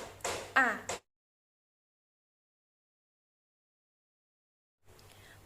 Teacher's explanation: Vokal A menggunakan tinggi rendah lidah rendah bawah, gerak lidah bagian depan, struktur terbuka, bentuk bibir tak bulat. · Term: bunyi vokal A